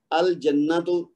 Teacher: جیم حرف قمری ہے تو الف لام لام بولنے میں آئے گا